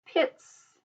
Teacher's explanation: the unvoiced sound of the suffix S is the hissing sound